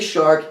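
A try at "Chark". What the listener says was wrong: CH. Not SH.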